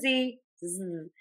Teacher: tip of the tongue is either pointed down or behind the top front teeth. Air continues out of the mouth. Voice box is on and moving.